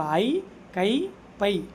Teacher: தனித்து வரும்போது அது முழுமையாக ஒளிக்கும். அப்ப அதனுடைய மாத்திரை அளவு இரண்டு.